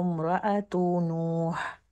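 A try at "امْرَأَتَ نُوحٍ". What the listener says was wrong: امرأتن، تا کو فتح.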